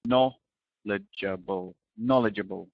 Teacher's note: There's quite a lot of syllables here, but remember the stress is on the first syllable